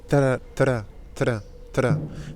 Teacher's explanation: Et si vous voulez, apprendre à prononcer le R, ou vous entraîner à prononcer le R, je vous propose quand il est en début de mot, simplement pour savoir comment ça se prononce, mettez un T devant. Parce que le T, la langue est déjà en position pour claquer, repartir et faire un R.